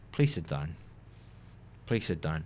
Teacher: it sounds very serious because there's just a falling intonation